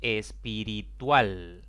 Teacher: es una palabra de cuatro sílabas la mayor intensidad cae en la última sílaba contando de izquierda a derecha como no termina ni en n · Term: palabras agudas